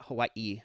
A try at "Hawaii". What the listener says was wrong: Even the W, it's supposed to be a slight V sound. So it's more no Hawaii. Have like replace the W with a V, Hawaii, but it's like really slight.